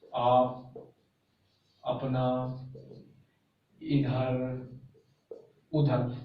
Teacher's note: निरानुनासिक यानी कि ऐसे स्वर उच्चारण वायु केवल मुख से निकलती हो। निरानुनासिक में ऐसे स्वर जिनमें उच्चारण करते समय जो वायु है वो खाली मुंह से निकलती हो, उसमें नाक का कोई प्रयोग ना किया जाए, उन्हें कहते हैं निरानुनासिक। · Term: मौखिक स्वर